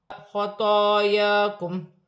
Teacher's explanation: خطایاکم خا پر کھڑی تو پر کھڑی زبر ہے، یا پر کھڑی زبر ہے، ایک الف کی مقدار کھینچ کر پڑھا جائے گا۔ میم ساکن میں وف کی صورت میں کوئی تبدیلی نہیں ہوگی۔